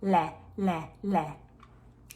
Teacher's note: the back of the tongue is doing nothing, the tip of the tongue is flapping. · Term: clear